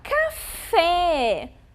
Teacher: a sílaba mais forte daquela palavrinha certo então olhem lá café a sílaba fé é mais forte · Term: sílaba tônica